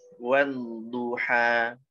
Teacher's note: Rasain huruf dodnya ngalir dulu sebelum ngucapin huruf dod yang dhammah. Kan huruf dod yang bertasydid itu terdiri dari dua huruf, yang sukun dan yang berharokat dhammah. · Jadi rasain huruf dodnya ngalir dulu. Nah, itu suara ngalirnya dari pinggir lidah. Dari pinggir lidah gara-gara pinggir lidahnya kena di geraham atas.